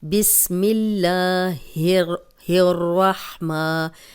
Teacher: اب را کو موٹا پڑھیں گے کیونکہ را پہ زبر ہے اور شد والا حرف دو بار پڑھا جاتا ہے، تو ہم را کو دو بار پڑھیں گے۔